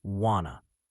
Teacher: instead of saying want to as two separate words, singers will often sing wanna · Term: connected speech